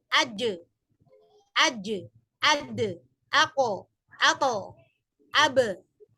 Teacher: Aj, enggak ada suara. Kemudian kalau diberikan qalqalah jadinya ada suara terpantul